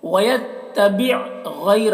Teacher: یہاں پر یا لین ہے، اسے جلد پڑھنا ہے